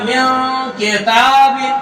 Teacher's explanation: حروف اخفا ہے تو نون کو ناک میں چھپایا جائے گا